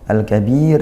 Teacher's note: Kemudian al-kabir, al-kabir ini di sini mad bertemu huruf hidup dibaca waqaf, maka mad arid disukun, banyaknya boleh 1, 2 atau 3 alif dan diakhiri ra-nya diwaqaf maka sukun dia, yaitu ra-nya tarqiq. Kenapa tarqiq? Karena didahului ya sukun gitu kan jadinya, maka dia dibaca tarqiq tibis.